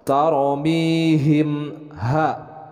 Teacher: untuk ikhfa syafawi ini harus ada ditahan dulu 2 harokat